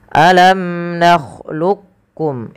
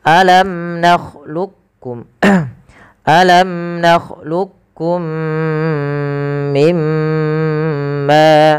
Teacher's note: Yang pertama dengan idgham kamil, yang memasukkan langsung huruf qaf kepada huruf kafnya secara utuh, dan yang kedua masih menyisaikan yaitu idgham naqisnya.